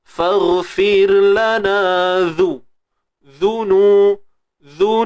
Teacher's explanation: Ni banyak mat asli ni. Untuk zal, huruf zal kita kena keluarkan sedikit ujung lidah kita